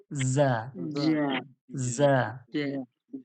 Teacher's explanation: যা যে আমরা বলবো, আগের ক্লাসে বলেছিলাম, জিহ্বার আগাটা, জিভের আগাটা উপরের দাঁতের ধারালো অংশ আর নিচের দাঁতের ধারালো অংশ, দুটো দাঁতের ধারালো অংশের মাঝামাঝি আপনার জিভের আগাটা রাখুন। রেখে এবার যা বলুন।